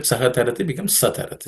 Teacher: Saha tarati becomes satarati because of sandhi, because the visarga is dropped. It's called lopa.